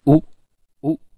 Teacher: this is the mid high back vowel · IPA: ʊ